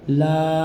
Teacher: अलिफ मद्दा को एक अलिफ के बराबर खींचते हैं · الف مدہ کو ایک الف کے برابر کھینچتے ہیں